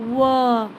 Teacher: वा का उच्चारण स्थान दंतोष्ठ होता है ना